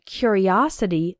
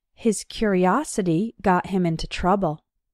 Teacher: in the noun form curiosity the third syllable is strong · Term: strong syllable